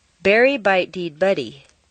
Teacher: We're going to practice totally denasalizing your voice for a moment, which means turning the nasals into the other consonants